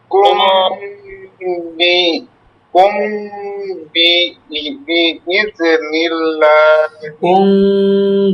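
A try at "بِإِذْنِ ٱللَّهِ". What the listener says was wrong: বিইজনিল্লাহ। ইজে হয় কেন? ইজ ইজ ইজ ধরে রাখবেন, সাকিন উচ্চারণ ধরে রাখতে হবে। বিইজনিল্লাহ।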